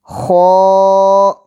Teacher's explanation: ح، حلق کے درمیانی حصے سے ح ادا ہوتا ہے۔ خ، حلق کے شروع سے جو منہ کی جانب ہے وہاں سے خ ادا ہوتا ہے